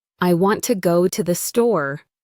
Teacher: Store. The other words, I, to, the, are said quickly and softly. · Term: stress timing